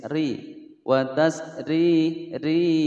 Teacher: ada rok berharakat kasrah dibaca tipis